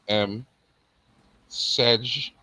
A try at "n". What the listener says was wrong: Ni, not M. That was ni. You said M. Ni.